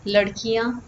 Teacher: remove that and replace it with EA yeah that's the sound the E becomes shorter and ya has a nasal ending